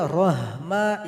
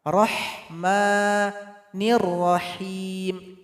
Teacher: Tidak boleh rahma, itu salah. Ini ha tipis yang pedas, keluar dari tengah tenggorokan.